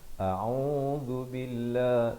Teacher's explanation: ain berbaris dhammah di pertengahan kerongkong makhrajnya dengan dua harakat